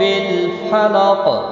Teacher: وقف کی صورت میں ساکن ہوگا، اس پر قلقلہ بھی ہوگا